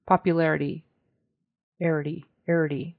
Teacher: in America that turns into more of a very soft T sound more like a d a soft D